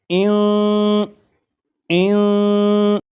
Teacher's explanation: نون ساکن کی جو آواز ہوگی وہ ناک میں چھپ جائے گی، اس طرح کی اس میں غنہ بھی ہوگا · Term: اخفا